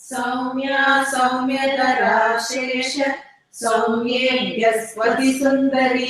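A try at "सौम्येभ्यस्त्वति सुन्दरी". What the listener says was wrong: நீங்க இப்போ chanting speedல சொல்லிட்டு கிளாஸ்ல சொல்றது மெதுவா சொல்லுங்க கொஞ்சம்.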